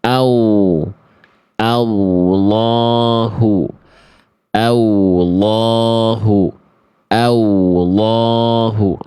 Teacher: banyak orang melafazkan lafaz Allah itu seperti menambah huruf wawu di sana